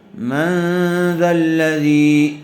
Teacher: من غننے کے ساتھ اخفا ہوگا